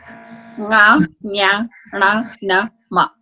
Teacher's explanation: Nga, nya, na, na, ma. Nasal of every articulation point. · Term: nasals